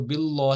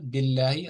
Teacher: لام الجلالہ یعنی اس کو آپ نے باریک پڑھنا ہے ترقیق کے ساتھ پڑھنا ہے. اس کو باللہ ہی نہیں پڑھنا ہے باللہ آرام سے سافٹلی اس کو پڑھنا ہے کیونکہ اس سے پہلے کسرہ ہے.